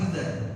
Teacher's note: idza ini mad asli dua harakat